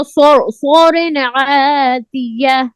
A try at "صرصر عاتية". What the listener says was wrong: صرصر آواز بند ہو جائے صرصر عاتیہ نہیں صرصرین نہیں ہے صرصر عاتیہ قلقلہ نہیں کرنا